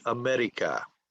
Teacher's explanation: you're taking the tip of your tongue and you're flipping it or flapping it up against your alveolar ridge